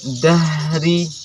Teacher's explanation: Dia sifatnya menghadirkan nafas dan suara. Dahri nyambung suara ha itu dengan ro-nya.